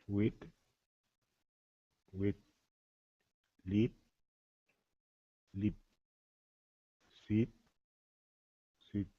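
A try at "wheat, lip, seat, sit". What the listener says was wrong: Um, the last one sounded a little bit similar, but otherwise good, right? So seat, sit. And it's okay if you exaggerate these words at first, right?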